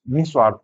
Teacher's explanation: विसर्ग में हल्का सा हा बोलेंगे।